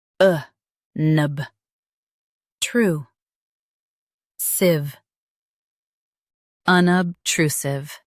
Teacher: Stress tru and keep siv soft.